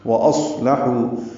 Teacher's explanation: ہے تو حرکات لمبا ہے، لام کاف باریک ہے، وَأَصْلَحُوا میں واو ہونٹوں کی نا تمام گلائی سے ادا کریں گے ، حمزہ اقصی حلق سے ادا کریں گے، صاد سے ملائیں